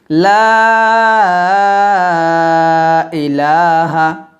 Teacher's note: জিহ্বার আগে উপর দাঁতের আগে লাগিয়ে পাতলা উচ্চারণ করবেন লা ইলাহা লাতে তিন আলিফ টান দিতে হবে